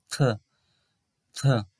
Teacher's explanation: আমাদের উপরের পাটির দাঁতের নিচে জিভটি রাখতে হবে, রেখে তারপর বাতাস বের করে এই উচ্চারণটি করতে হবে